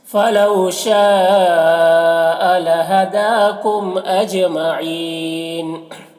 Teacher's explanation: اجمعین، جیم میں قلقلہ ہوگا اور یہاں پر وقفی کی صورت میں نون کا زبر سکون سے بدل جائے گا تو پھر مد عارض وقفی ہوگا۔ اس میں طول توسط قصر تینوں جائز ہوتا ہے، طول اولا ہوتا ہے، پھر توسط، پھر قصر کا مرتبہ ہوتا ہے، تو اس طرح سے پڑھیں گے۔